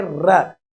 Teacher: हमारी जिह्वा जो है वो दंत मूल, जिसको हम मसूड़े कहते हैं, मसूड़ों की तरफ जाकर मसूड़ों के आसपास इसका उच्चारण करती है , वहां स्पर्श करती है जिह्वा, इसलिए मसूड़ों से इस ध्वनि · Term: वर्त से ध्वनि